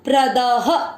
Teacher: प्रद, द पूरा, द में अ मिक्स करेंगे प्रद। द में अ की मात्रा, विसर्ग को पढ़ेंगे ह।